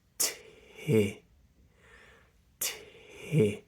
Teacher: If it's an unvoiced going into a voiced, like twisted, tid, ti, then ti, ti. Be exhaling after the T, ti, and then phonate a little later on. Don't phonate immediately, twisted, did.